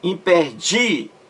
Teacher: A sílaba mais forte é a penúltima, de. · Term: paroxítona